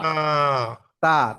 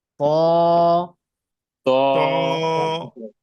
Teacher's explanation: তা আর ত একই জায়গা থেকে উচ্চারণ হয়, পার্থক্যটা শুধু হচ্ছে তা পাতলা করে উচ্চারণ হবে আর তটা ভারী ভাবে উচ্চারণ হয়